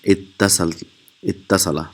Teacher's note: So it will be ivtasala. So here the waw is changed into ta, and the ta remains, and that gives an idgham.